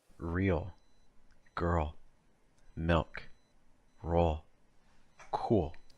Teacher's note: the tip of your tongue is down the back of your tongue is high there is enough air moving through your throat it's like a consonant sound becomes a vow sound like uh